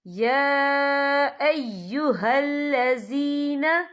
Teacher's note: یا کے اوپر کھڑی حرکات ہے اور اس پہ چھوٹی سی مد بھی ہے، تو ہم یہاں 3 یا 4 حرکت کے برابر کھینچیں گے۔